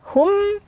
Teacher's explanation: mim sukun setelahnya huruf hamzah, maka hukumnya adalah izhar syafawi. Jadi mimnya dibaca jelas, hum, baru kemudian baca as ya.